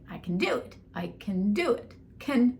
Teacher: can, /kən/ instead of /kæn/ is how we say it without the “not”